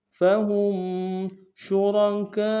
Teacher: شین تفشی میں واضح کریں گے اور را کو موٹا ادا کریں گے